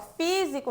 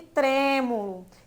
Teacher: físico tá um som mais aberto diferente de tremo que eu falo com o som mais fechado